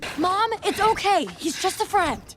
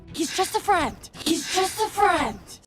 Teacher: The article a almost always reduces to just a schwa